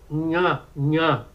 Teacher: depois você tem o N no palato, nha